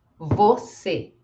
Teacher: este e é pronunciado como e não como i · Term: som de e